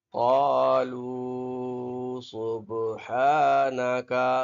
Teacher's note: با ساکنہ ہے نا تو با میں قلقلہ ہوگا، ٹھیک ہے، جنبش پیدا کریں گے با میں